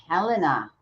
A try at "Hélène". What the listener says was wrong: Hélène. Hélène. Yeah, French. You don't pronounce the H.